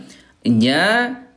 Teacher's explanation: huruf jim keluarnya di tengah ya Bunda ya di tengah lidah ya disentukan dengan tengah langit-langit